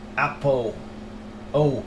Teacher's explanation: In a cocknney accent, the L sound at the end of a word, the dark L, is often replaced by a vowel sound. Specifically, a sound similar to an O or W. · the L sound sounds like O or W when it appears at the end of a syllable. So L at the end of a word sounds like O and W mix. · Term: L vocalization